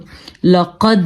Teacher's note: دال میں ہم نے قلقلہ کیا ہے کیونکہ دال ساکن ہے, حروف قلقلہ میں شامل ہے قطب جدن, قاف, طا, با, جیم, دال.